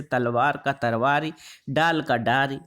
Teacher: अवधि में ल ध्वनि प्राय र हो जाती है